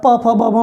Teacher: प फ ब भ में जिह्वा और दोनों ओठ स्पर्श कर रहे हैं मजबूती से।